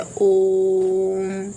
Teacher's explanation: दीर्घ स्वर से भी ज्यादा समय लगता है वो प्रलुत स्वर होता है। तो यही एक ऐसा वर्ड है जिसमें दीर्घ दीर्घ से भी दीर्घ स्वर से भी ज्यादा समय लगता है।